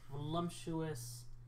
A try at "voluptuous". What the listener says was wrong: It's There's no M. Voluptuous. Voluptuous. You're saying it wrong.